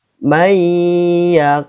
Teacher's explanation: Cara membacanya meleburkan nun sukun ke huruf berikutnya dan disertai gunnah 2 sampai 3 harokat. Ya, masuk dengan dengung. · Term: idgham bi gunnah